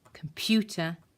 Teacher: For example, in this word, computer, pew is louder and bigger than the other syllables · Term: syllable stress